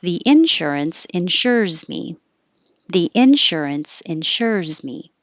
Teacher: put the stress on the noun on in insurance